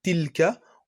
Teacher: Et la différence, en fait, entre les deux sons, c'est que vraiment, pour prononcer tilka, donc on sort pas beaucoup d'air, et c'est vraiment l'extrémité de la langue qui joue un rôle crucial.